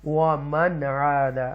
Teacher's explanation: یہاں پر اظہار کریں گے, کلیئر پڑھیں گے نون ساکنہ کے بعد عین آ رہا ہے حروف حلقیہ میں سے